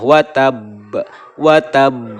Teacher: cara membacanya adalah dengan memantulkan huruf Qalqalah dengan benar-benar jelas besar dan tebal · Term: qolqolah kubro